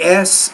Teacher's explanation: you have a voiceless consonant in which there's no vibration here the vocal folds are held open